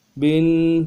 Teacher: تنوین میں غنہ کریں گے، 1 الف کی مقدار میں کھینچیں گے